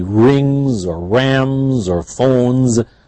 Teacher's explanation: the nasal sounds and they are always voiced so always after it would be Rings or Rams or phones always a z at the end